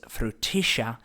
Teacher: Now, it becomes frutilla because those double L's, it's spelled F-R-U-T-I-L-L-A, the double L's make a sh sound in Argentina as opposed to a y sound in Spain